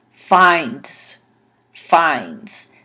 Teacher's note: So it makes a z sound at the end instead of a s sound.